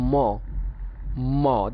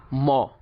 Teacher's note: ম যখন আমরা উচ্চারণ করছি ম, আমাদের মুখটা প্রথমে ক্লোজ, ক্লোজ থেকে ওপেন হচ্ছে ম, এটাও বাইলেবিয়াল, মুখটা ক্লোজ থেকে ওপেন হচ্ছে ম।